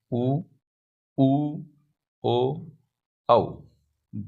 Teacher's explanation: वे स्वर जिनका उच्चारण करते समय ओष्ठो की आकृति गोल वृत्त के समान बन जाती है उन्हें वृत्ताकार स्वर कहते हैं।